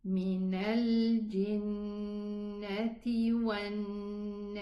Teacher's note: So keep the ghunna, and the ghunna is just 2 counts. So don't extend the ghunna so that you can vibrate and go up and down with the ghunna.